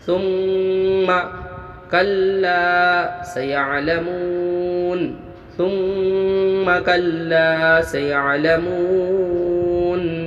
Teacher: ثم میم مشدد غنہ ہوا، آواز کو ناک میں روکنا ہے، 1 الف مقدار۔ لا الف مدہ ہوا، مو و مدہ ہوا، دونوں کو 1 الف مقدار کھینچ کے پڑھنا ہے۔